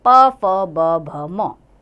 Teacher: ये ध्वनियां कंठ, तालु, मुद्रा, दांत तथा ओष्ठों को स्पर्श करके निकलती हैं। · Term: स्पर्श व्यंजन